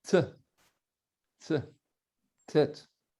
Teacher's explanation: Le tête, c'est un T que l'on appelle un T emphatique, prononcé de manière pompeuse.